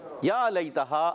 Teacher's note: یا متحرک جب بھی ادا ہوتا ہے آتا ہے تو اس کی ادائیگی جو ہوگی وہ زبان کے درمیان اور تالو کے درمیان سے